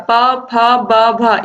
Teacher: इन सभी को जब आप बोलोगे तो आप देखोगे कि आपके जो दोनों ओठ हैं इन्हीं से इनका उच्चारण हो रहा है, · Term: ओष्ठ